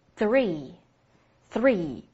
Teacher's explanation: 看老师口型，舌尖被上下齿咬住